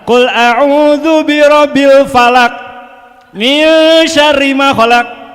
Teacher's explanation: Kol-kolahnya harusnya keluar, ini ditelan. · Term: kol-kolah ditelan